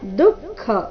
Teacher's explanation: ದು ಮೊದಲು ಅಲ್ಪಪ್ರಾಣ ನಂತರ ಖ ಮಹಾಪ್ರಾಣ